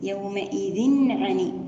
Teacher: يومئذ هنا فيها تنوين كسر متساوي وبعده حرف العين، وعندنا إظهار حلقي